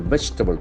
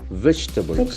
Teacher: The accent falls on the first syllable.